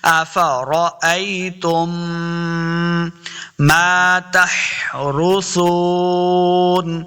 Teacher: تا کو میم مشدد کے ساتھ ملانا ہے، غنہ کے ساتھ غنہ بھی کرنا ہے